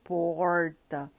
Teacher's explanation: A variação do R retroflexo, nesse R caipira que a gente chama, que tem nas zonas rurais de São Paulo